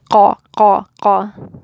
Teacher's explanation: it's the raising of the tongue hitting the soft palate. That's that sound. That's the vibration. That's one of its prominent features. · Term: qalqala